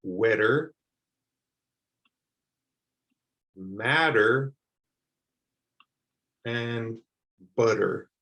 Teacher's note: you can get used to pronouncing that double t like a d sound especially if you're in the usa · you don't hear the t at all when i pronounce that better